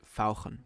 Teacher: Let's start with guttural sounds. German has the special ach sound, which sounds very throaty.